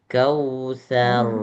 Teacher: Tapi karena sebelum huruf ro ada huruf yang berharakat fathah yaitu huruf tsa, maka ro dibaca sukun tapi dalam keadaan yang tebal bukan tipis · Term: Huruf ro yang tebal